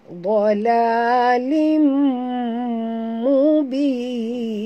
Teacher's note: tanwin baris dua bawah ya, bertemu dengan mim. Di sini hukumnya idgham ma'al gunnah, kena dengung tutup mulut. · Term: idgham ma'al ghunna